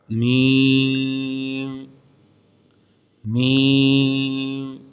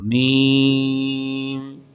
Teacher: یہ حرف میم بھی ہونٹوں سے ادا ہوتا ہے